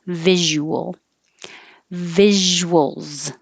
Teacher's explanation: you can round your lips while you're making the visual and come back for the l or make it three syllables visual it gives you a little